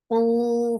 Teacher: Open your jaws very nicely. Ooh, for dhamma, circle your lips and make it 2 counts long